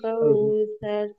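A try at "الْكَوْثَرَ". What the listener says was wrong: কাউ এখানে টানা যাবে না, এই যে টানগুলা যেখানে টান নাই সেখানে টানলে আগামীকালকে আপনারা বুঝতে পারবেন যে যেখানে টান নেই সেখানে যদি টানেন তাহলে কি মারাত্মক ভুল হয়ে যায়, আগামীকালকে আপনারা ইনশাল্লাহ জানতে পারবেন।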